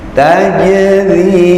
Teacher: ada ra berkasroh, itu dibaca tipis